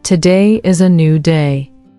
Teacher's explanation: Notice how your voice naturally rises with optimism.